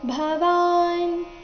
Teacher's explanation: ಭವಾನ್ ಇಲ್ಲಿ ಭ ಮಹಾಪ್ರಾಣ ಹ್ರಸ್ವದಿಂದ ಶ್ಲೋಕ ಶುರುವಾಗ್ತಾ ಇದೆ.